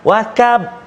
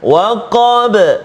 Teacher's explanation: huruf qaf berikan hak dia, sifat dia kan tebal, isti'la sebagainya, iaitu jangan baca tipis dengan macam kaf.